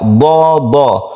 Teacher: huruf dad ini adalah huruf isti'la, artinya huruf yang tebal yang dia itu masuk ke langit-langit